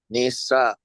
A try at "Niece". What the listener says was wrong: There's a glottal right after the N-I. Niece. Okay. What you're almost saying is that English niece, right? But you just put a glottal and it's niece.